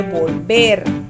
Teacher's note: En ver está la mayor fuerza de voz